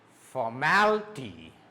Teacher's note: You will go up and then down. For is normal, mal is up, raise is stressed, and then down ty.